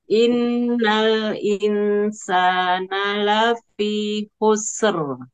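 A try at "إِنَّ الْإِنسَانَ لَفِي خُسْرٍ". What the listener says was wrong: Nah, sekarang innal in tahan dua-duanya, Bu. In-nya tahan, in-nya pun tahan lebih lama.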